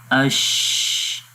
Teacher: تو اگر ہم یہاں پر اس امیج میں دیکھیں تو یہاں پر زبان کا درمیان والا حصہ تالو کے درمیان والے حصے پہ نہیں لگ رہا، البتہ اس کے قریب تر ہے، تھوڑا سا یہ گیپ ہے، کیونکہ اس کے اندر صفت ہمس ہے، اور ہمس میں ہوتا یہ ہے کہ سانس جاری رہتا ہے۔ جب سانس جاری رہے گا تو اس کو تھوڑی سی اسپیس مل گئی ہے یہاں پر، جس سے سانس آواز جب ووکل کارڈ سے باہر آتی ہے تو یہ چھوٹی سی جگہ سے باہر نکل جائے گی، جس کو ہم پڑھتے ہیں اش۔ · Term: شین